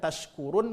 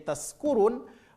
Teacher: Karena tidak faham tempat keluar huruf. Kalau shin tempat keluar hurufnya adalah tengah lidah, sedangkan huruf sin tempat keluar hurufnya adalah ujung lidah.